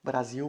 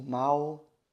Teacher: no final da palavra nós não fazemos nenhuma diferença entre o l e o u